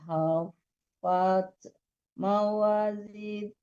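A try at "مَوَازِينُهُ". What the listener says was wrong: Panjang lagi tuh Bu. Mawa itu kan ada alif. Tadi kan udah ada Jawa seperti itu, dipanjangkan.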